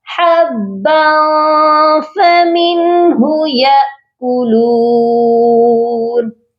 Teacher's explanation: حبا، یہاں پر آپ دیکھیے با، اس کے آگے فا ہے، حروف اخفا ہے، اسی لیے با کی تنوین پر صرف اخفا ہوگا